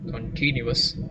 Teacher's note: Continuous, three syllables. you put an accent on the second syllable, continuous.